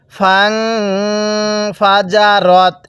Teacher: এই নুন সাকিনের পরে ফাটি হলো ইকফার হরফ, যার কারণে এই নুন সাকিনটি আমরা গুনাহ করে পড়ছি